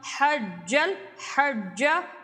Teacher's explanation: جیم کی آواز آئے گی، جی یا جھی کی آواز نہیں آنی چاہیے، اور جیم کو آگے لام سے ملائیں گے، حجل۔ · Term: جیم مشدد